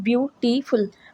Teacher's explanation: अब this stress is on the first syllable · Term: सिलेबल स्ट्रेस